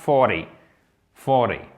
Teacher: Vous prononcez le R, le T, vous le prononcez presque comme un D.